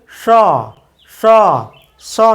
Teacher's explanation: উচিত ছিল স স। মূর্ধন্যস্বের সঠিক উচ্চারণ হবে স, অর্থাৎ জিভটাকে উল্টে দিয়ে জিভের যে অগ্রভাগ তা মূর্ধাকে স্পর্শ করে এই স উচ্চারণ করতে হবে